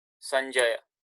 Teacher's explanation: It is a nya. This is the palatal nya, nasal sound.